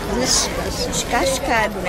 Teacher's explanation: Esse S meio misturado com X, trocando o E pelo I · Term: chiado